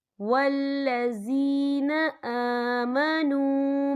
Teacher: یا ساکن ہے، یا ساکن سے پہلے زیر ہے، تو ہم یہاں 2 یا 3 حرکت کے برابر کھینچیں گے۔ اور آگے دیکھیں آمنو، نو، یہاں پہ واو مدہ ہو رہا ہے، واو ساکن ہے، واو ساکن سے پہلے پیش ہے، تو یہاں بھی ہم 2 یا 3 حرکت کے برابر کھینچ کے پڑھیں گے۔ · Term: یا مدہ